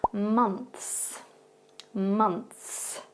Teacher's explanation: So, as you can tell at the beginning of this word, that O sound is more pronounced like a U sound instead